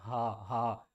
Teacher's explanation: ہا کو ہم نے حلق کے سب سے نیچے والے حصے سے ادا کرنا